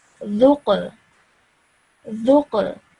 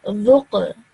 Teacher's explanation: And we know that Qaf is one of those 5 letters of the Kalkala rule. So when we join the Dal to the Qaf, we join it with a bit of a jerk sound.